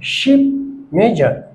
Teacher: আবার স জ এই দুটি সাউন্ড উচ্চারণ হবে জিহ্বার মধ্যভাগ ও আলভেলার রিজের একটু সামনে নিয়ে এসে উপরে জিহ্বার মধ্যভাগ উপরে উঁচু করে একটু ফাঁকা রেখে বলতে হবে স ঝ, অর্থাৎ বাংলা তালবস্যা বা মধ্যাস্যের মতো উচ্চারণ হবে, যেমন শিপ মেজর।